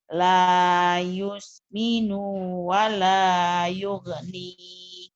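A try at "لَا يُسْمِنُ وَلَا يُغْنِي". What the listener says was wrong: Nah, nu-nya pendek, Bu. Jadi Ibu tadi sedikit panjang di nu-nya. Ulangin, Bu. La yusminu wa la yughni.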